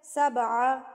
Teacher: تن حبۃ انبتت سبع، با پہ قلقلہ کریں گے. با پہ جب جزم آ جاتی ہے تو با کو قلقلہ کر کے ہلا کے تھرتھراہٹ کے ساتھ پڑھا جاتا ہے